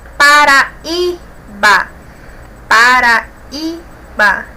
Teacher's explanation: Nós temos o I aí como a sílaba mais forte, ela é paroxítona.